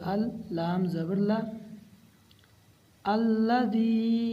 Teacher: اور یہ اللہ والا لام نہیں ہے، اس کو موٹا نہیں پڑھنا